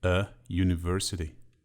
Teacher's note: The letter U at the beginning of the word university is pronounced as y